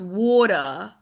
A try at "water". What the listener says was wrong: A little more rounding and puckering of the lips there.